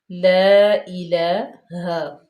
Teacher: لام کے اوپر فتح اشبائی ہے یعنی کہ کھڑے زبر ہے، تو اس کو ہم 2 حرکات کے برابر لمبا کریں گے، کھینچیں گے، لا الہ، لا الہ۔ ہا انتہائی حلق سے، ہا پہ جو ہے وہ زبر ہے